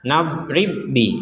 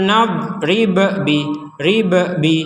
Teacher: jangan dipantulkan karena huruf ba sudah masuk kepada huruf selanjutnya karena sama-sama huruf ba